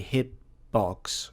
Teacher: when I pronounce it a hitbox, I don't pronounce the t sound.